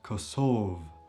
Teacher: Kosovo in Albanian is called kosov, so the last syllable is stressed in the indefinite form